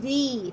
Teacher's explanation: باریک ادا کریں گے را کو زیر کے ساتھ